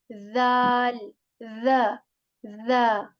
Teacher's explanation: we take the tip of our tongue and we touch that to the edges of our upper front two teeth